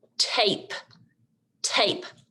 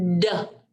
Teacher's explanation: ta is voiceless and duh makes our voice box vibrate